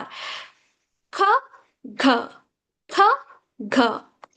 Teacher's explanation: when you say c the back of the tongue touches your soft pallet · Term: wheel sounds